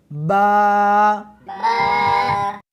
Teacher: اس حرف کو دونوں ہونٹوں کے ساتھ ملا کر پڑھیں گے۔